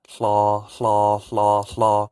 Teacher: You just say hello, hello, or flaw, flaw, flaw, flaw. You can kind of hear the H coming out of my mouth before I say the L.